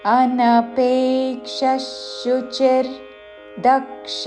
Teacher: విసర్గ ఉచ్చారణ తాళవ్య ష పక్కన షాతో పదము మొదలవుతున్నది కాబట్టి ష ఉచ్చారణ